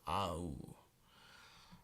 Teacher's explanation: The AU combination is pronounced ow, as in about, but trying to make sure that both vowels are pronounced.